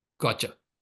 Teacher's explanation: the t becomes ch gotcha right in English we do that when we speak quickly